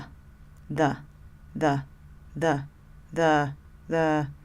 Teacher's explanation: this is an unstressed vowel that we use when we're not articulating any sounds in our mouth at all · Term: schwa